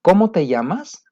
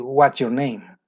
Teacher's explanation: las preguntas en inglés, la entonación es falling intonation, se va hacia abajo